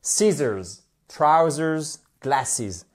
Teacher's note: vous avez l'accent tonique qui est sur la première syllabe